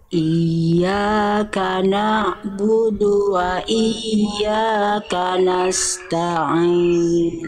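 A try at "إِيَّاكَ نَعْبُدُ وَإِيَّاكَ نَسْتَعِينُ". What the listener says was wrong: Iya, to, jangan to, te. Iya, vokal-vokal A-nya tipis ya Bunda ya. Jangan samakan dengan alfabet A, ya. Iyyaka na'budu wa iyyaka nasta'in.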